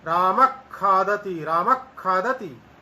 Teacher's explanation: आधे ख जैसा उसका उच्चारण हो जाता है। आधा विसर्ग भी नहीं होता, आधा ख भी नहीं होता, इन दोनों के बीच वाली स्थिति यहाँ पर उच्चारण के रूप में हमें प्राप्त होती है। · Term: जिह्वामूली